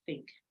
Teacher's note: So it's voiceless, it's dental because the two teeth are involved, it's fricative because the air can flow, and it's oral.